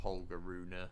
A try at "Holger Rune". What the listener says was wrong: It's Holger Rune. The E is silent.